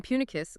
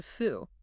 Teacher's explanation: The voiceless bilabial plosive P naturally decays or relaxes into a bilabial fricative, the F sound.